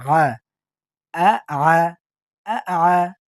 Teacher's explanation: হামজা জবর আ, হরকতের উচ্চারণ তাড়াতাড়ি আ। আর আইন জবর আ, শক্ত, গলার ভিতর চলে যাবে।